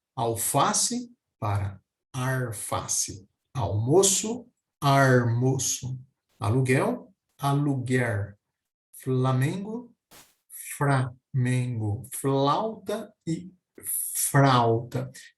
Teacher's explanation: pronúncia bem acentuada desse R como um som e retroflexo com a curvatura da língua para trás ficando aí o chamado R caipira · a troca de som especificamente no caso do L pelo R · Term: rotacismo